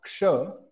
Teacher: Ksha is made up of Ka plus the cerebral Sha